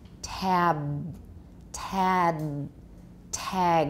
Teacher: i want you to put full voicing on that final voice stop listen tab tad tag remember the vowel is going to change